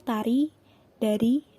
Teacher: dilepas misalnya Papa Mama yang kedua konsonan hambatan alveolar Hai t&d dilafalkan dengan menempelkan ujung lidah pada gusi untuk menghambat udara dari paru-paru kemudian melepaskan udara itu